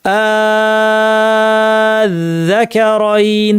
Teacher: মাদ লাজিম হচ্ছে 3 আলিফ টানতে হয়, সেই জন্য এটাকে পড়া হবে আয-যাকারাইন, 3 আলিফ টেনে আয-যাকারাইন।